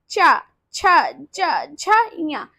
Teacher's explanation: हमारी जो जीभ है वो हमारे तलवे को टच कर रही है तो इसे क्या कहते हैं तालव्य वर्ण